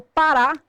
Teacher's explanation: Quando eu falo parar, a sílaba tônica é o ra.